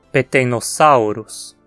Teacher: A penúltima sílaba nesse caso é sal, que tem um ditongo, au, e assim ganha o acento.